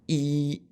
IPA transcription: i